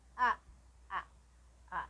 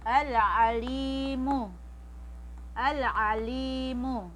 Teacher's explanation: Si ain, sa lalamunan din. Hindi katulad ni alif